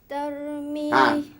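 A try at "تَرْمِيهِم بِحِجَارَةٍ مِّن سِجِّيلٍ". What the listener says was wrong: Ra tu kena tebal. Termim kan tebalkan.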